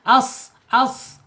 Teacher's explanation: kalau shad karena lidahnya terangkat dia agak sedikit tertahan